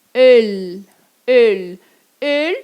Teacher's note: O L lá com a pontinha no céu da boca.